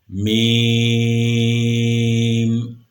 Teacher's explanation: میم جو ہے یہ ہونٹوں کے خشک حصے سے ادا ہوتا ہے۔ اوپر اور نیچے کے دونوں ہونٹوں کا خشک حصہ جب آپس میں ملتا ہے تو میم ادا ہوتا ہے